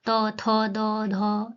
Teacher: ऐसा लग रहा है कि आपका जो टंग है वो आपके टीथ से लग रहा है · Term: दंत